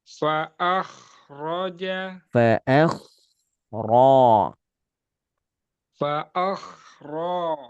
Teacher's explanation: Baca tebalkan kho karena di alif fathah. Fa'akhraja saja.